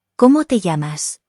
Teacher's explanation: Cómo has an accent on the first O, so the first syllable needs to be emphasized.